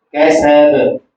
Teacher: با پھر حروف قلقلہ میں سے اس پر وقف ہو رہا ہے